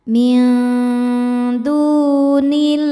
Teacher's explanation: Cara membaca lamnya ini adalah dibaca dengan tipis, pangkal lidah datar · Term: tarqiq